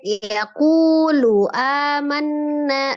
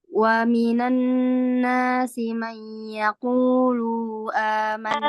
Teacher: Kunya yang mad, lunya pendek.